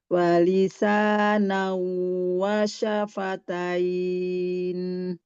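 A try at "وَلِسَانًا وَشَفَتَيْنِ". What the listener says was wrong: Sedikit lagi ditahan Bunda, idghamnya ya. suaranya lebih plong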